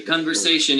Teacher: Con, it's stressed. Ver is not stressed. Say is stressed. Shun is unstressed.